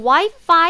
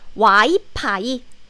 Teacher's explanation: in korean we don't have the f sound so instead of the f sound we replace the sound with p sound